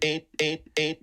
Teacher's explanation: the diphthong in the middle is a little bit nasalized eight eight maybe you can hear that more at the tail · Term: nasalization